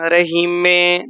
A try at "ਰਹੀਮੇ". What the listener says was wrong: ਇਹ ਰਹੀਮੇ ਕਰੀਮੇ ਸਿਹਾਰੀ ਨਹੀਂ ਲਾਉਣੀ ਬਿਹਾਰੀ ਨਾਲ ਰਹੀਮੇ।